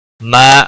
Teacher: او کو کھینچنا نہیں. ما الف مدہ ہے، ایک الف کے برابر کھینچ کر پڑھیں گے